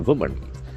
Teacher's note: accent falls on the first syllable